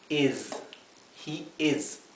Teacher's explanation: la s intenten que sea zumbada no es una S como del español